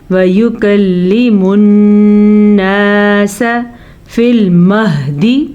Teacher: شد کی وجہ سے یہاں پہ غنہ ہوگا کیونکہ نون کی شد ہے